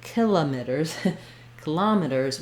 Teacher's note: And then we change back, instead of meters, kilometers, kilometers, we have some secondary stress on the meters, so we go back to the E sound. Then we still do our flap and our ers, kilometers.